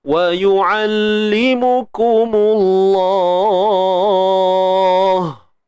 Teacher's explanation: Terus masuk pada kalimah Allah ni, lam ni kita kena tebalkan.